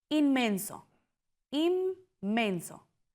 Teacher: La N se convierte en M antes de la M. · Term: Asimilación